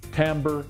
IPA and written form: ˈtæmbər (timbre)